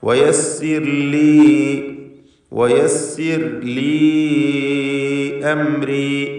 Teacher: ലീ എന്നതിലെ യാഇൻ്റെ ദീർഘം മദ് മുൻഫസിൽ ജായിസാണ്. 4-5 ഹറക്കത്തിൻ്റെ അളവിൽ ദീർഘിപ്പിക്കുക.